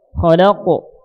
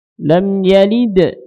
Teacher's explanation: kalau yang tebal itu ngarahnya ke O, ya, karena tebal. Khalaqo. Kalau yang tipis ngarahnya ke E.